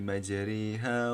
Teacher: membunyikan sedikit fathah ke arah kasrah supaya bunyinya menjadi a. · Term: imalah